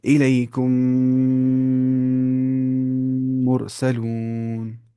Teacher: میم کو میم سے ملا کر گنہ کے ساتھ پڑھا جائے گا. ایسے یہاں پہ گنہ کریں گے، میم کو میم سے ملانا ہے اور گنہ کرنا ہے. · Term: ادغام مع گنہ